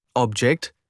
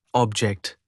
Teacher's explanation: often shifting stress from the first syllable to the second when transitioning from a noun to a verb